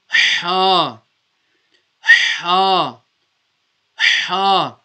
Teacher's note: the letter ha will be pronounced from the middle of the throat so you might have to just squeeze the throat slightly just